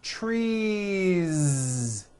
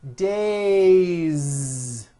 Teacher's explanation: make it plural is you continue the voicing throughout the whole word and add on a voiced Z